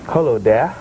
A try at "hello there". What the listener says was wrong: Not hello dear. I'm